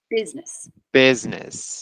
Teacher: That Z just needed a bit of voicing.